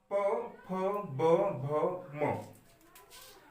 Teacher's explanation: तो ओष्ठ में प, फ, ब, भ, म का उच्चारण करते हैं तब आपके जो होठ हैं दोनों ऊपर और नीचे के क्षेत्र के वह जाकर बंद होंगे और बंद होने के द्वारा मुख में वायु का भंडार होगा और जैसे ही हम मुख को खोलते हैं वैसे ही ध्वनियां बाहर की ओर निकलती हैं, उसे हम कहते हैं ओष्ठ।